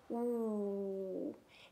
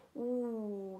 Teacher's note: my lips are rounded and puckered out, kind of like a fishy lip. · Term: sneaky W